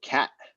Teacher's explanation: later generations reinterpret that unreleased t as something like a glottal stop